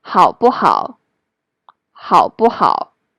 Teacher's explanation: And when it's used in the middle of two same syllable, it will become the neutral tone.